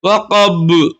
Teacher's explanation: حروف قلقلہ 5 میں سے با آ رہا ہے، تو یہاں پہ کیا ہے، ان کے مخرج ٹکر کھا کر الگ ہو جاتے ہیں، ایسا لگے گا ہم اس کو 2 مرتبہ پڑھ رہے ہیں